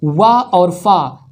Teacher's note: दंतोष्ठ, दंतोष्ठ वा और फा दंतोष्ठ से उच्चारण होता है।